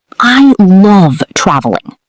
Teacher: Stress love. Feel the emphasis.